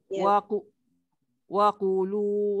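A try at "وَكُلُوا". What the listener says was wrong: kalau waqulu dia jadi ku ku ku nipis.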